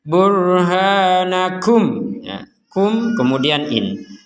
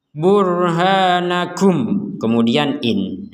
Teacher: Jadi yang dibaca dengan jelas itu artinya mim sukunnya itu terbaca sebagai mim. Mim sukunnya terbaca sebagai mim.